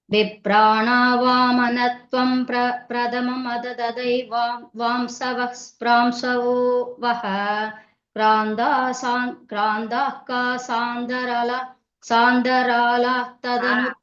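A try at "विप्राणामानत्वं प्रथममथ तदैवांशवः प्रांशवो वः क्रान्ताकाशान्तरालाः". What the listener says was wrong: பாருங்க, பிட்டு பிட்டு பிட்டா சொல்லக்கூடாது, மெதுவா சொன்னாலும் பரவாயில்ல, அப்படியே கை வச்சுட்டு மெதுவா படிச்சுவோம்.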